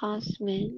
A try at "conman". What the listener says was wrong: Rồi hình như nó không có S đâu con. Rồi conman đúng rồi, dân lừa đảo.